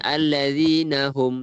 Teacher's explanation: Hum tu jelas. Izhar syafawi. Kita bacanya jelas. Hum. Tak ada kita bacanya lama.